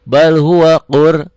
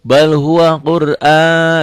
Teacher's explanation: rohnya tebal karena sebelum roh mati baris di atas